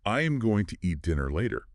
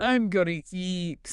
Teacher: The words going and to completely collapse into one single unstressed sound.